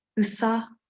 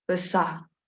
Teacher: But however, this schwa sound appears in free distribution with the next vowel, the vowel which I claim for now, which I claim that it's there, and this close mid central vowel it appeared in free distribution with the schwa sound.